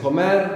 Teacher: The intonation, comer, we have the accent on the end.